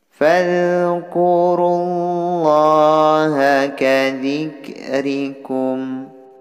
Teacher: Ini lafaz Allah yang harus dibaca tebal karena diawali harakat dhammah.